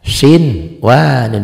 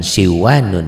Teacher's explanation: Tapi karena ketemunya satu kata, satu kalimat, ini sinwanun, nun mati ketemu wawu, tidak dibaca idgham, tetapi dibaca apa adanya, dibaca idhar. Sinwanun, jangan siwanun ya. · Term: idhar mutlak